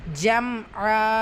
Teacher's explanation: ஜம் ஆ மீம் சுக்கூன் ஜம் ஆ மீம் சுக்குனுக்கு அப்புறமா ஐன் வந்திருக்கு இத்ஹா ஷஃபவி உள்ளதை உள்ள மாதிரி ஓதணும் குன்னா செய்யக்கூடாது